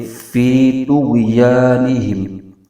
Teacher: فی اس میں یا مدہ ہو رہا ہے، ایک الف کھینچ کے پڑھیں گے۔ آگے غائن جو کہ جزم والا حرف ہے تو اس کو پیچھے تو جو کہ متحرک حرف ہے اس کے ساتھ ملائیں گے تو۔